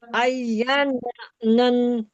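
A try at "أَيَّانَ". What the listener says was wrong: नन क्यों? कहाँ है अय्या? नहीं, अय्या अरे जबर, आई या, देखें हमजा या जबर, या अली जबर।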